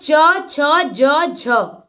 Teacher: जिन व्यंजनों के उच्चारण में स्पर्श का समय अपेक्षाकृत अधिक होता है और उच्चारण के बाद वाला भाग संघर्ष हो जाता है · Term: स्पर्श संघर्षी व्यंजन